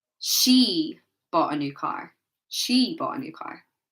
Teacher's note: placing the word stress on she, emphasizing she.